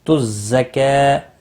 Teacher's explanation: زا تھوڑا سختی سے ادا کریں، اس کے اوپر تشدید بھی ہے